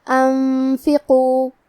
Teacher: اخفاء کا معنی ہے چھپا دینا، تو ہم نون ساکن کو چھپاتے ہوئے اور غنہ کے ساتھ یہ حکم کو ادا کریں گے. انفقو حرف القاف کو موٹی آواز میں پڑھیں گے.